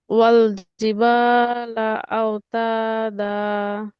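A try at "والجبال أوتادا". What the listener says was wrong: মাশাআল্লাহ, সুন্দর হয়েছে।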